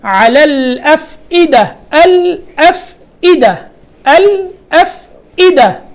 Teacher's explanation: یہاں حمزہ پڑھی جائے گی، عین کی آواز بالکل نہ آئی یہاں